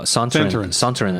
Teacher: we call him Sontarans with the accent on the second syllable